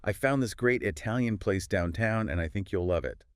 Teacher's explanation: the speaker naturally puts more emphasis on certain words. Great, Italian place downtown and love it. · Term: emphasis or stress